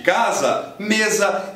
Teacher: Sim, se você passou pelo seu processo de alfabetização em português, seu cérebro está completamente acostumado a imediatamente enxergar um S entre vogais com som de Z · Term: som Z